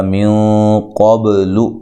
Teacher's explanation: یہاں نون ساکن کا اخفا مع الغنہ ہے، موٹا اخفا کرنا ہے ، قاف کو موٹا ادا کرنا ہے، با پہ قلقلہ کرنا